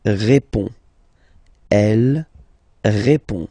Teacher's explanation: Il répond. So, final D is not pronounced.